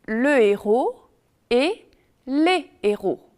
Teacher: On dit le héros et les héros, pas de liaison.